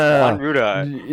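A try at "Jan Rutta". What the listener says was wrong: No. is saying Juan Ruda for Jan Ruda. Jan Ruda.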